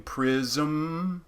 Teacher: you could also have a syllabic m like in prism you might just do a syllabic m there and not do a vowel leading into it